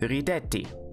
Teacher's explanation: the stress has moved back, because it's still the second to last syllable